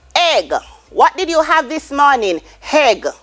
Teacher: the h is not on the word but in pronouncing them we add the h